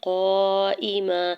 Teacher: قاف کے اوپر زبر، ساتھ الف اٹیچ ہے، اس کے اوپر مد متصل ہے، 4 سے 5 حرکت کھینچ کے ادا کریں گے